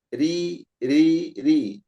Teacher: dibaca tipis ketika kasrah